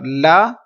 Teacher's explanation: ناک میں آواز نہیں جائے گی